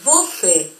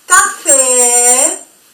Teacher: es mucho más larga la intensidad de la letra E con el acento agudo